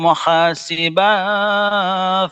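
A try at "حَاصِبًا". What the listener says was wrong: Hasiban. Hasiban. Ban bukan ba. Hasiban dengung.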